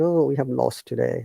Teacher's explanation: Okay, as I was saying, higher intonation like lower intonation. Like when we are very sad, our tone goes down.